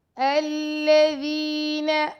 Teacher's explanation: ذال کو یا مدہ ہے تو ذال کو 2 سیکنڈ تک لمبا کریں گے. الذین، نون کو لمبا نہیں کرنا.